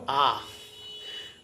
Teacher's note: আর একদম নিচের অংশে, যেখানে জিহ্বা প্রায় সরল রেখায় থাকে, কোনো ফাংশন করে না প্রায়, সেই অবস্থাটাকে বলে নিম্ন স্বর, একমাত্র আ।